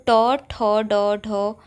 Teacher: ये सभी मूर्धन्य होते हैं क्योंकि इसमें हमारी जीभ मुड़ जाती है